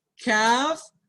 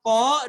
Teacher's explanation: Kaf, dia keluar udaranya. Ko, dia di dalam udaranya.